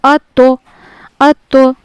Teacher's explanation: ता क्योंकि हरूफ मुस्तालिया में से भी है तो इसको पुर पढ़ा जाता है। यानी मोटा करके पढ़ना है।